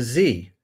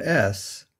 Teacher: the sound Z is a voiced consonant made with vocal cord vibration by contrast s is made with the vocal cords held apart that is the glottis is wide open so there's no vibration